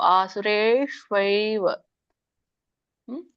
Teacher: ಆಸುರಿ ಶ್ವೈವ ಯೋನಿಶು ಅಲ್ಲಿ ವತ್ತಿದೆ ಶಕೆ ಶ ಅನ್ನೋದು ನಾಲಿಗೆಯಿಂದ ರೋಲ್ ಮಾಡಬೇಕು ನಾಲಿಗೆ ರೋಲ್ ಮಾಡಿ ನಾವು ಶ ಅಂಗಳಕ್ಕೆ ಹಚ್ಚಬೇಕು ನಾಲಿಗೆ ಅಂಗಳ ಅಂಗಳ ಹಚ್ಚಬೇಕು ಶೇ ಬರ್ತದೆ ಮತ್ತೆ ವತ ಹೇಳಬೇಕು ಆಸುರೇ ಶ್ವೈವ